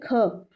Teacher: तो ह की भी साउंड आएगी इस पर, तो ज़्यादा हवा निकल रही ना इस पर ख, ठीक है। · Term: महाप्राण